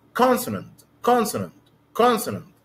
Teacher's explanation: The stress is on the first syllable, so it's consonant consonant consonant.